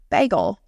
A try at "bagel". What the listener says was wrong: Yeah, you say it with a U. You say like bagel.